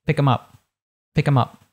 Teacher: So we have with him, her, them, we tend to drop the beginning so it becomes im, So if I say pick them up, I'd say pick them up, pick them up. That TH completely disappeared, right?